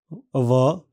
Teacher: इस ध्वनि के उच्चारण में निचला होठ ऊपर के दांतों के पास आता है और फिर थोड़ा नीचे हो जाता है।